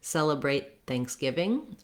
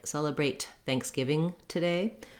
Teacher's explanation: But especially when we're following this word with another word, if I'm saying celebrate Thanksgiving, I'm going to stop the air for that T, celebrate Thanksgiving, and I'll just release it into the next word. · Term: stopped T sound